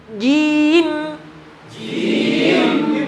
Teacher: Perhatikan, tekan jim. Tekan ke mim. Berikan gunah dengung sedikit.